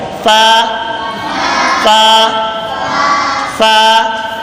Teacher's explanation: اوپر کے دانتوں کے کنارے اور نیچے کے ہونٹ کے تری والے حصے سے ادا ہوتا ہے. فا فا فا. یہ اوپر کے دانت ہیں، نیچے والے تری والے ہونٹ یعنی نیچے کے ہونٹ کی تری والے حصے کی جگہ پہ لگ رہے ہیں تو فا ادا ہو رہا ہے۔